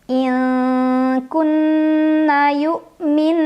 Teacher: ada ghunnah musyaddadah karena ada Nun yang bertasydid cara membacanya didengungkan ditahan kurang lebih dua harokat